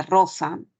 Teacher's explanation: la lengua va a vibrar porque la lengua va a golpear un determinado punto en este caso los alvéolos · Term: fonema vibrante